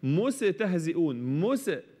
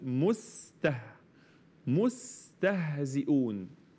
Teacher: اخد زمن السين كلها وانا في المخرج لان لو سبت المخرج هعمل قلقله ماقولش مس لاقول مسته مسته مسته مستهزئون ناخد بالنا برض ان